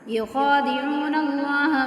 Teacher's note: اللہ پہ مد ہے 3 الف کے برابر کھینچیں گے